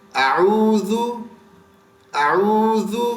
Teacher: زال کو زبان اوپر کی سامنے کے دانتوں سے ٹچ کر کے نکالا جاتا ہے